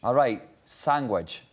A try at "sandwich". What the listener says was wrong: The D was pronounced as a G. But you're sounding the G deliberately.